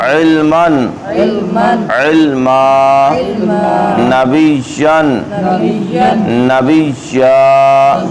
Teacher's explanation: آخری حرف پر دو زبر، اس کو الف سے بدلنا ہے